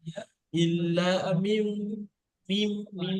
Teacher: মিমজের মিম একাধিক পরিমাণ গুণনা হবে এই বা আসার কারণে, একে বলা হয় ইকলাব